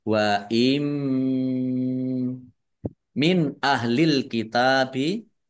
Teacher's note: nun sukun bertemu dengan huruf alif bacaan izhar dibaca jelas · Wa im min, nun sukun bertemu dengan huruf mim, bacaan idgham bi gunnah, masuk dengan mendengung, yaitu mendengung mim, ditandai mimnya ada tasdidnya. Mim tasdid dibaca gunnah atau mendengung, ditahan biar tampak dengungannya